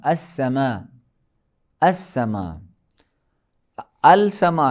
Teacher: پھر لام معرفہ کا حروف شمسی میں ادغام ہونا